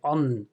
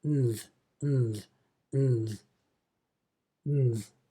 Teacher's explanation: you pronounce the N with your tongue in the same position as the TH, which is between your teeth.